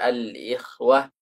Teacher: Tafkhimnya itu sangat rendah sekali. Hampir tidak seperti tafkhim. Tapi tetap dikatakan tafkhim.